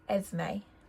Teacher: the S is kind of pronounced like a Z